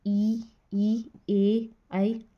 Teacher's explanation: अग्र स्वर वो स्वर होते हैं जिन स्वरों के उच्चारण में जीभ का अग्र भाग काम करता है। अग्र भाग मतलब आगे का भाग, तो वो शब्द है ई, ए, ऐ।